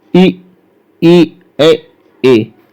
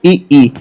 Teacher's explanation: जिन स्वरों के उच्चारण में जीभ का अग्रभाग काम करता है उन्हें अग्र स्वर कहते हैं।